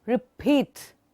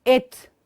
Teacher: In the end of the word, I should be able to hear some explosion.